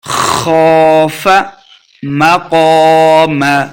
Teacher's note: خوف مقام، قاف زبر الف قا، الف مدہ ہے، 2 حرکات لمبا کریں گے اور قاف کو ہم نے موٹا کر کے پڑھنا ہے